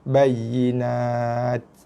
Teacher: Bunyi ta hujung sikit, ada hembusan nafas sikit.